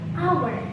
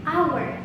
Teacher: We don't need to pronounce this H here, so we just pronounce it hour.